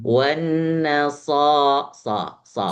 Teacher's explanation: lebih dibuka, lebih mendekati ke A sedikit ya.